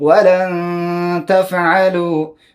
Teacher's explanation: نون ساکنه ده شاته تا راغلی، تا حرف دی اخفا دی